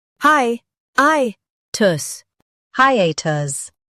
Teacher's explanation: Stress the A and keep tus light.